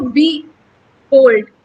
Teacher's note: अब यहाँ पे जब हम बोलते हैं तो बी होल्ड, बी जो है वो अनस्ट्रेस्ड है, और जो होल्ड वर्ड है, ये जो होल्ड इसका सिलेबल है, ये स्ट्रेस्ड है